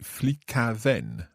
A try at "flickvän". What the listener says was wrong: No, because we drop the vowel because it doesn't sound so good. we just drop in and say flickvän.